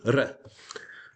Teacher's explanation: The R is not rhotic, not like a voiced one, but more of a flicked, almost a D